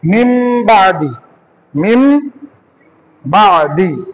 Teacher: তানবিনের পরে যদি বা হয়, তাহলে ওই নুন সাকিন বা তানবিনটাকে মিম দ্বারা পরিবর্তন করতে হবে।